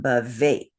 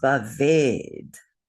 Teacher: the word should be bhavet, but the T changes to da. The ta changes to da. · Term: consonant sandhi